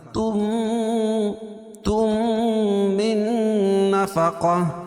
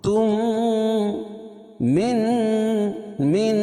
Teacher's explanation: میم ساکن کے بعد میم آئے تو ادغام شفوی ہوتا ہے، یعنی میم کا میم میں ادغام ہوگا، غنہ ہوگا اس میں